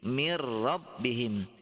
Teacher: jadi masuk dan tanpa dengung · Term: idgham bilagunnah